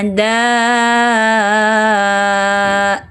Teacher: Huruf dal, 'da', terletak di ujung lidah di belakang gigi seri atas.